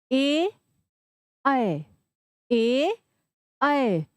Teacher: कंठ और तालू की सहायता से ए ऐ है ना तो इन दोनों का उच्चारण होता है हमारा कंठ गले और तालू की सहायता से